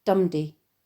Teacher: at the beginning of lines two and three which is where the iambic pattern of an unstressed stressed syllable is reversed so that you get dumdi known as a troche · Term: trochee